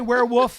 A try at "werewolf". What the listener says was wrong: He doesn't pronounce his L's.